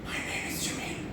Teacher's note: The problem is with the phonation. So this is dysphonia.